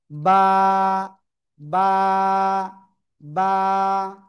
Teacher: দুই ঠোঁটের ভিজা অংশ থেকে উচ্চারণ করব